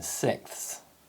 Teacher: the s sound may be elided in sixths